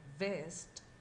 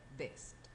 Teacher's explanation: the lips are pressed together and your vocal cords should vibrate